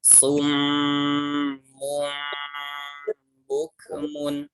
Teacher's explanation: Gunah itu suaranya masuk ke hidung dan setiap gunah itu bacanya ditahan. 3 ketukan atau 1,5 ayunan.